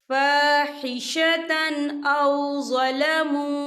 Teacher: हम यहाँ इजहार करेंगे और हम इसे बिना गुन्ने के पढ़ेंगे